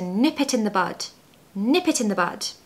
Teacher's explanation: make sure you pronounce nip really fast because if you spend too long on that word it will sound like NEP and we don't want that we want nip so to nip